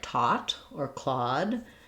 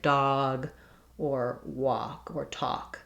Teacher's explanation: learn the open shape with a little rounding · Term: aw vowel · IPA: /ɔ/